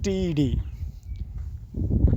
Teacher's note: It is alveolar sounds, because blade of tongue touch to alveolar ridge, and it is also plosive because there is blockade of ear in oral cavity.